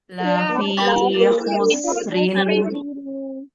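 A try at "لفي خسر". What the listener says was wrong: Hati-hati, sempurnakan sifatnya. Khusrin. Nah, jadi jangan khuse, tapi khus, ya. La fi khusrin.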